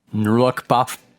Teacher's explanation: Yeah, I think it's because your lips aren't slamming shut. It's like you have to make the air flow and then slam your lips shut instead of like popping your lips open and letting the air flow.